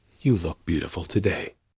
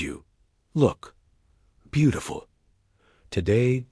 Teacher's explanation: Dropping the voice at the end to the very bottom. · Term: descending intonation